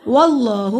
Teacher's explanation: अल्लाह के नाम को मोटा पड़ा, अल्लाह के नाम से पहले ज़बर है, अल्लाह के नाम पे खड़ी ज़बर है, अलिफ के बराबर लंबा होगा।